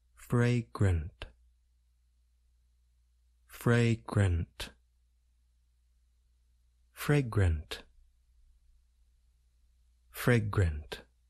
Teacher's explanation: We generally do not stress the second part of the word, grunt. It involves the a vowel sound.